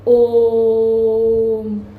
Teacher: तो इतनी लंबी आवाज आती है और इसको बोलने में क्या है? अ, उ और म तीन अक्षरों का उच्चारण करना पड़ा। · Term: ओम का उच्चारण